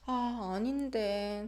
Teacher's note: When intonation falls, it shows hesitation and it's non-confrontational.